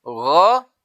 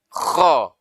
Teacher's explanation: gha itu dibaca dengan lembut, kho diberikan tekanan lebih kuat sedikit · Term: huruf ghain